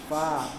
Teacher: Makhrajnya fa itu adalah ujung gigi atas bertemu perut bibir bawah.